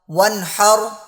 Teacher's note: واو نون زبر ون، ہا رو زبر حر، ون حر، آگے وقف، ون حر۔ نون ساکن کے بعد ہا ہے اور ہا حروف حلقی میں سے ہے، اس لیے یہاں پر غنہ نہیں کریں گے